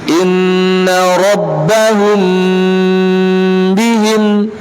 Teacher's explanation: dengan memperhatikan gunnah tanpa mentasdidkannya, tanpa ditekan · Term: ikhfa Syafawi